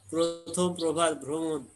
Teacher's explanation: শব্দের আদিতে র ফলা যুক্ত অ থাকলে সেই অ এর উচ্চারণ সংবৃত। শব্দের আদিতে যদি র ফলা যুক্ত অ থাকে, র ফলা যুক্ত অ অর্থাৎ যে অ থাকবে তার সাথে র ফলা থাকবে, যদি এরকম থাকে সেই অ এর উচ্চারণ সংবৃত।